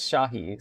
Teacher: this is Shahi, so that S sound is like a sh sound. It's not like just an S like Sahi.